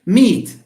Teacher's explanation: no it's not aspirated because it's at the end of the syllable